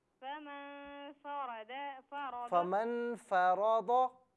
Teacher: फरद रा को भी पुर करके पढ़ना है और दाद को भी